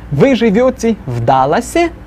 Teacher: Once again, you've got a question without a question word. Sounds like very rising intonation.